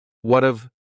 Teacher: Instead, you're going to hear a reduction or a contraction of the first two words, just like we saw with the previous example. What of, so what and have are going to be pushed together.